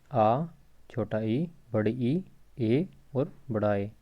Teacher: बात कर लेते हैं अवृत्तामुखी की। तो इन स्वरों के उच्चारण में होठ गोल नहीं होते। मतलब व्रत होता है सर्कल, तो व्रत मतलब गोल।